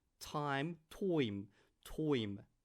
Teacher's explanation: Turn the I into oi.